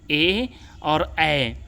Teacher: केटी जो है कंठ और तालव्य दोनों को मिला देते हैं, तो वह होता है, उसका उच्चारण होता है कंठ और तालु दोनों के द्वारा